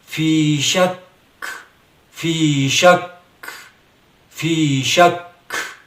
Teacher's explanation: فی شک یعنی ہمس ہوگا یہاں پہ. جو آخر میں کاف کی ہلکی سی آواز نکل رہی ہے اسے ہمس کہا جاتا ہے